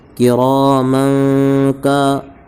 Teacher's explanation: کاف الف زبر کا، الف سے پہلے کاف پر زبر کی زبر ہے اس لیے الف مدہ ہوگا، الف مدہ کو ایک الف کے برابر کھینچ کر پڑھیں گے.